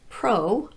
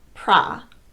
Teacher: syllable it will usually be pronounced with the schwa vowel and if Pro occurs in the stressed syllable it will be pronounced with either the long o Pro or the short ah pra